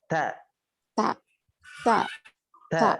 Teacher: huruf ta ketika diucapkan terdengar ada nafas yang mengalir